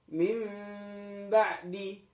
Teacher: ketika membaca iklab, maka ada jeda sedikit di bibir. Mim ba'di, tidak rapat semuanya. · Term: iqlab